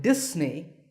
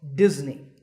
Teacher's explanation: If you said Disney, that's the mistake. The S in the middle is actually a Z sound